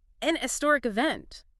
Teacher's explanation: traditionally, especially in British English, the H in historic was sometimes pronounced quite softly or even almost dropped. Ah, so if the H sound is weak, then N might feel more natural because it flows into the vowel sound that follows.